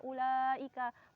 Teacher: panjangnya 2 alif atau 5 harokat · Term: mat wajib mutasil